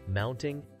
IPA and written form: ˈmaʊntɪŋ (Mounting)